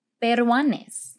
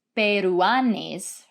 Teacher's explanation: there is a u and an a together but they are not pronounced as two separate syllables we're not saying peruanes right rather they form what we call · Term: diphthong